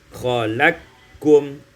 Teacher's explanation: diidghamkan qaf pada kaf sehingga kita baca khalaqkum. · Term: idghamul qafi fil kaf